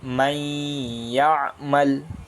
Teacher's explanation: نون ساکن کو چھوڑ کر یا سے ملا کر پڑھ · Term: ادغام